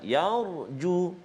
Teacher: Kalimah yarju iaitu ra sukun ataupun ra baris mati sebelum dia huruf ya berbaris atas, maka ra tu kita baca tebal